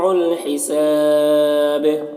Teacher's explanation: حساب یہاں پر وقف کریں گے تو با کا زیر سکون سے بدل جائے گا، تو با میں قلقلہ ہوگا اور یہاں پر مد عارض وقفی بھی ہوگا۔